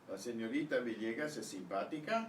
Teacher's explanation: Notice how the question in Spanish rises at the end, typically.